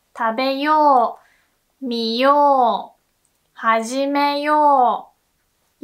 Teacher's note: When you see this おう sound, you also pronounce it like お, the long お sound.